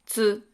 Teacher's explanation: Please note that combined with the vowel U, T turns into tsu